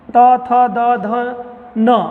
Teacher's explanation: sound जो है दांतों में आती है, लगती है दांतों से, दांतों के पिछले वाले हिस्से में लगती है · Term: दंत वर्ड